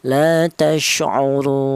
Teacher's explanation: Atau wajah yang kedua namanya tawasud, artinya sedang, yaitu panjangnya 2 alif atau 4 harokat atau 4 ketukan